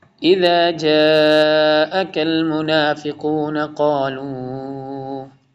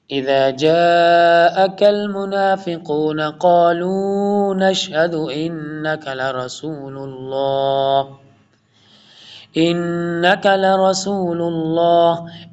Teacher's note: جاء کے اوپر بگ مد ہے، بڑی والی مد ہے، فل ٹائم لانگ کریں گے